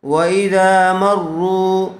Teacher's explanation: واذا میم را زبر، مر را کے اوپر تشدید ہے، تشدید والے حرف کو مشدد کہتے ہیں، اس لیے میم کو را سے ملا کر پڑھیں گے